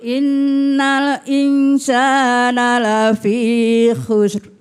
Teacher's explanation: kadang-kala orang bilangnya innalai, ada e-nya. Lai, innalai, enggak boleh mantul, harus berhenti. Jangan innalai.